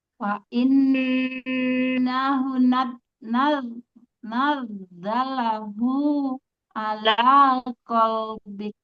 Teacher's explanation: nanti hunya dipanjangin 2 harokat. Ada dhammah terbalik ya.